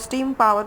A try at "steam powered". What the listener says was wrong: You want to say steam powered. So your P, be careful. Make sure you pronounce that clearly or it sounds like a B. And those are two different sounds in English.